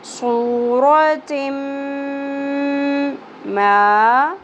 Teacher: تنوین کی ساؤنڈ اور میم کی ساؤنڈ کو ملانا ہے، مکس کرنا ہے اور غنہ کرنا ہے، آواز کو ناک میں ہولڈ کرنا ہے، صورت ما الف حرف مدہ ایک الف کے برابر، فی ای صورت ما.